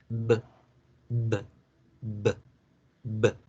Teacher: Esos son los sonidos voiceless. Para que en inglés me entiendan la B, debo generar la vibración. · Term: voice sounds